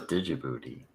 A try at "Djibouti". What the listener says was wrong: The D is silent, you ignorant motherfucker.